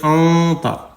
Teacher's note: نون ساکن کے بعد حروف اخفا میں سے تا آ گیا ہے تو یہاں پہ نون کی آواز ناک میں چھپا کر پڑھیں گے